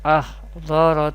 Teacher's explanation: this is Mustalia letter, always pronounced with thicker voice or heavy voice